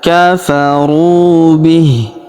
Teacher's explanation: Huruf ru kita panjangkan dua harakat karena wau sukun di depannya. Alifnya tidak dibaca kafaru bih.